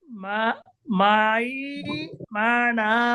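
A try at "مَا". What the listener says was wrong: এই তো মাশাআল্লাহ, সুন্দর হয়েছে।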